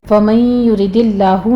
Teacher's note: فَمَن يُرِدِ اللَّهُ میں نون ساکن کا ادغام الغنہ پہلے کریں گے، اس کو 2 کاؤنٹ کر کے آگے لفظ جلالہ کو باریک پڑھنا ہے